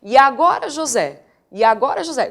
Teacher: é quando eu em vez de separar essas duas sílabas vou contá-las juntas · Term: Elisão